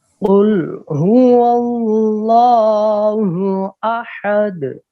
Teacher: اللہ کی لام کو ہم نے منہ بھر کر آواز نکالنی ہے. اس کو کہتے ہیں منہ بھر کر آواز نکالنے کو پر پڑھنا.